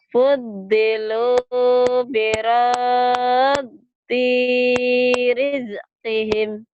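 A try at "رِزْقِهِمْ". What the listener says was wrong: Jangan rije, jangan ada e-nya, bukan kolah-kolah, bukan. Rizqihim. Rizik itu mah Habib Rizik atau ya. Jangan rizik, rizqihim.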